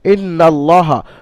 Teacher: টান নিষেধ নুনের উপরে মুশাদ্দাদ ওয়াজিব গুন্না এক আলিফ পরিমাণ নুনকে গুন্না করে পড়তে হবে আর নুনের উপরে জবার হওয়ার কারণে হারাকাত আসার কারণে নুন তাড়াতাড়ি